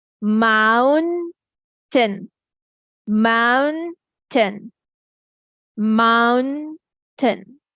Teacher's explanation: The ow sound of vowel here is said properly with open mouth.